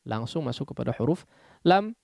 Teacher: malal langsung masuk kepada huruf lam. Jangan digunnahkan ya. Baik gunnah yang sedikit ataupun yang banyak ya. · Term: idgham bila gunnah